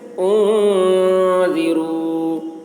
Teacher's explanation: نون میں اخفا، یعنی نون کی آواز کو ناک میں لے جا کر چھپائیں گے